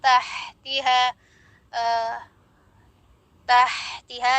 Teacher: Ini makhrajnya berdekatan ya. Kalau ha dia tengah tenggorokan, sedangkan ha dia pangkal tenggorokan, jangan sampai tertukar atau semuanya disamakan seperti ha simpul.